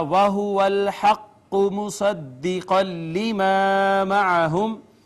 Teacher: لام مشدد، یہ حرف ادغام میں سے ما قبل نون تنوین، لام نے نون تنوین کو اپنے اندر ضم کر لیا، ادغام بلا غنہ